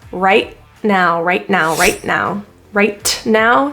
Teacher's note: the T and right is a glottal te